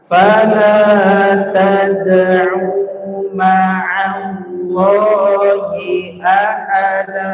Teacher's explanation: huruf ain itu harus kena tengah tenggorokan, enggak boleh dibaca fala tad'u enggak, tapi au kena tengah tenggorokan, tapi enggak sampai dalam juga, enggak sampai mengkelok.